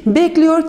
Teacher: Your eki eklendiği takdirde de e sesinin burada i sesine dönüşmüş olduğunu söyleyebiliriz